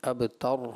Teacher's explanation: را جو ہے وقف میں پر ہوگی